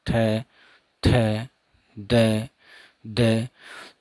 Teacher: जीभ का अगला भाग दांतों के सामने, ऊपर वाले दांतों के सामने जाके टकराता है।